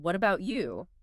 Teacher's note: that slight upward intonation on what about you in English, that's pretty crucial. It signals genuine interest